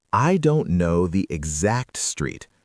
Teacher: put the stress on the word exact